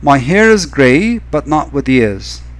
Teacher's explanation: my is unstressed hair is stressed it's unstressed gray is stressed but unstressed not stressed with unstressed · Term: iambic meter